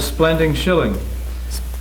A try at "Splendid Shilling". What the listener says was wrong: Splendid shilling. You said splending. Didn't he say splending? Splending shilling?